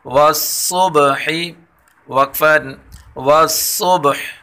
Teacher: صاد کو پر پڑھیں گے اور با حروف قلقلہ میں سے قلقلہ کریں گے